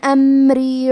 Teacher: کلمت امری میں میم ساکن ہے، لہذا ہم حرف المیم کو ظاہر کریں گے